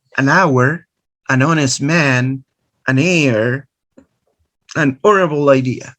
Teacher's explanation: this word starts with the letter h silent letter so you start with a vowel sound